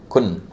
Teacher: The difference is that when I say kun, when I pronounce the noon, the tongue touches the upper palate